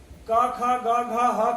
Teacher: तो क, ख, ग, घ, ह का उच्चारण स्थान क्या है? कंठ है।